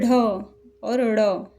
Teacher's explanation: ढ और ड़ बोलते हैं तो हमारी जिह्वा ऊपर की तरफ जल्दी से मुड़ती है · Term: उक्षिप्त व्यंजन